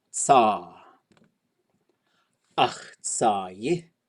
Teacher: You got to put yi on there. It's a low tone ending, so the suffix will be high. Generally speaking, a suffix that ends with a vowel will be opposite of the tone before it.